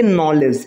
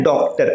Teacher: इसका उच्चारण औ के समान या फिर आ के देखिए आ के समान नहीं औ के समान होता है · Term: चंद्र